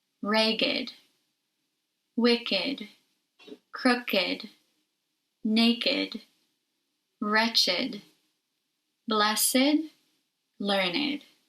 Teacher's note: when used as adjectives these words are pronounced with id even though they do not follow the rules for the id pronunciation